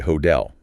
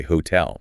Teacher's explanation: Because that second syllable is a strong, anchored beat, the T requires the high-effort explosion of air.